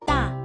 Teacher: 大 We need to use the fourth tone, or falling tone, in pronouncing. 大 Start the syllable at a slightly higher than neutral pitch, then go quickly and strongly downwards.